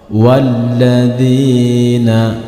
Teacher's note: Hamzah washol di sini tidak dibaca ketika kita membaca dari kalimat atau huruf sebelum Hamzah washal